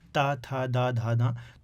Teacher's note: जो दंतव्य व्यंजन है, ता, था, दा, धा, धा, तो इनमें दांतों का प्रयोग होता है।